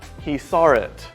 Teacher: Some parts of American English and British English might add an R between saw and it. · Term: intrusion